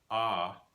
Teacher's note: the first vowel is ah, pronounced in the back of the mouth